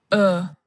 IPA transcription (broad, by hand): ʊ